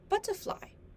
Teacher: It has a lower pitch and is shorter. In the word butterfly, the stressed syllables is the syllable but. The but in butterfly sounds louder.